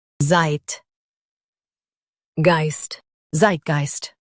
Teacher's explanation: Stress the Zeit syllable and keep geist smooth.